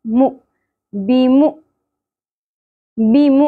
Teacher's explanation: मीम की पेश हमज़ा के साथ जुड़ेगी और झटका की आवाज़ आएगी, मीम हमज़ा पेश मु, बीमु, बीमु।